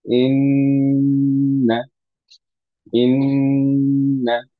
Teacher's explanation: প্রথম নুন যেটা সুকুনে সেটাকে ধরে রাখলাম। That's how you apply গুণনা।